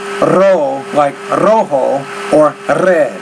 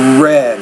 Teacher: Because you speak Spanish as a first language, you have a tendency to trill those R's like ro, like rojo, or red. But in English it's more red.